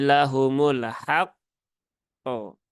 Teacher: ditunaikan dulu tasdidnya ya setelah itu baru tunaikan ee qalqalahnya Jadi lahumul haqqo tapi jangan lama-lama jedanya jangan Haq qo itu